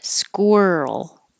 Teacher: Make sure you round your lips as you're making your K.